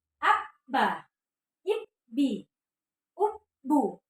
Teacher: Domah bertemu dengan ba mati ya, hamzah domah bertemu dengan ba mati, ube. Nah, ketika dia bertasydid ya, ditekan dulu baru naik ya.